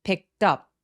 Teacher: 트 소리가 모음과 막 이렇게 만나게 되면 picked up. 떡이라고 부드럽게 연결이 됩니다